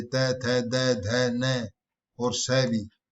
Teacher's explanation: दंत व्यंजनों के उच्चारण में जीभ की नोक ऊपरी दंत पंक्ति को स्पर्श करती है